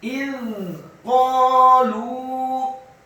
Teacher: Kemudian kata qalu, qafnya dibaca tafkhim, fathah 2 harokat karena setelahnya ada alif · Kata إذ قالوا, alifnya dibaca tipis, kasrah 1 harokat, za-nya dibaca sukun. Huruf za yang sukun dibaca tarqiq, lidahnya agak keluar sedikit dan tidak boleh diqalqalahkan.